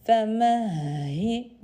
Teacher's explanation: h harflerine dikkat edelim boğazın en alt kısmından femehi Hi derken daha nefes veriyor gibi. · Hi derken daha nefes veriyor gibi. Yorgun H denilir bu H harfine. Sebebi sanki yorulduğumuzda bir yaparız ya.